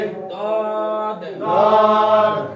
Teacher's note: ইয়া ইয়া 7 number মাখরাজ 7 number মাখরাজ জিহ্বার গোড়ার কিনারা জিহ্বার গোড়ার কিনারা উপরের মাড়ির দাঁতের গোড়ার সঙ্গে লাগিয়ে